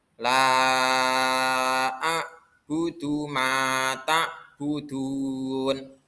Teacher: Ada yang namanya mat jaiz mungfasil. Itu dibaca panjang 5 harokat. Ya, 5 harokat atau 5 ketukan atau 2,5 alif.